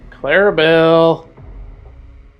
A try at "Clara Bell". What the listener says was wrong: I just like how you say her name. Like you say it like it's all one first name. No, it's Clara and Robert Bell.